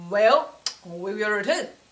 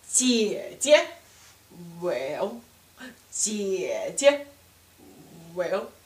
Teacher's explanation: So, well is exactly third tone.